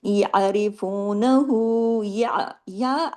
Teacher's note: खींचना है ठीक है या अरिफहु या या ऐन ज़बर या ऐन की आवाज जमाओ के साथ आपके गले से आनी चाहिए र के नीचे ज़ेर है तो र यहां हैवी नहीं होगा